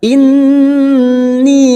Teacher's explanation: nun yang bertasdid gunnah musaddadah, 3 harokat kita tahan.